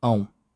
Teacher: then the final nasal vowel became diphthongized.